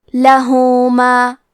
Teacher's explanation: کلمت لہو میں ہا پہ الٹا پیش ہے، یہاں حکم ہے مد صلہ صغرا تو ہم اپنی آواز 2 مد کے برابر لمبی کریں گے